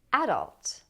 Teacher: But some people put stress on the first syllable and they say adult. Adult with the a sound as in cat.